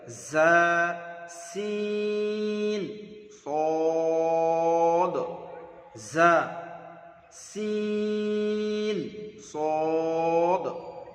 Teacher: 13 নম্বর মাখরাজ জিভের আগা এবং সামনের উপরের নিচের 2 দাঁতের আগার সাথে লাগিয়ে উচ্চারিত হয় জা। সিস কেটে হবে জা সিন সদ। · এই সদটা হবে পুর, বাকি জা এবং সিন বারিক।